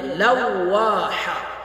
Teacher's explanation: حا کو حلق سے ادا کریں گے